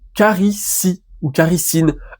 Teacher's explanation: Le T final, le T du thème est tombé. Puisque du coup, on ne prononce pas caritine, qui serait dur à prononcer, on préfère enlever le T.